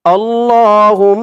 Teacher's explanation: দিয়ে মিম ধরবে হা মিম পেশ হুম মিম জবর মা হুম্মা হুম গুন্নাহ করতে হবে ওয়াজিব গুন্নাহ